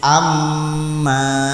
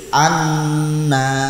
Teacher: Nun dan mim tasydid harus dibaca dengung yang lama yang lama itu berapa sekadar dua harakat atau satu Alif itu